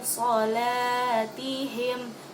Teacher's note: Jadi ada dengungan di situ. Solatihim, bukan lagi dibaca dengan jelas, yaitu an solatihim, bukan seperti itu karena ada dengungan sedikit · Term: ikhfah